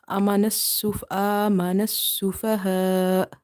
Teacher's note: The amount of stretching for both is 2.5. And here hamza, because we are making it sakin, silent, so we will give it a sudden pause.